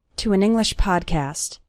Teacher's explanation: the words to an English all flow together